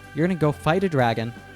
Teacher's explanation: And here, Donkey reduces going to gonna. Then the T at the end of fight is pronounced as an American T, D sound. The words then flow together to sound like you're gonna go fight a dragon.